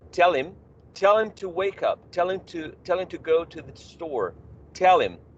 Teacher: the use of the elision of the first sound in him is quite common.